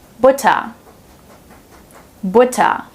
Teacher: Since the R is placed at the end of the word, we pronounce it as the silent R.